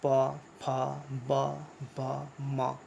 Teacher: ये हम लोग ओठ से बोलते हैं।